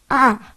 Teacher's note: É a vogal mais aberta.